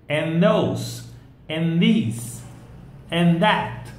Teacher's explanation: Basically, the TH sound disappears. Not really, but it sounds like if it had disappeared because of the link.